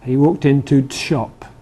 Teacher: You only hear it with a glottal stop. And it's almost as if, in quick speech, it's almost as if there's no definite article.